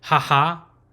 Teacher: the open syllable is a breathy open mouth sound